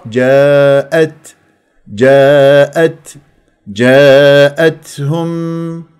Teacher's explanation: وفيها تاء ساكنه فيها همس لطيف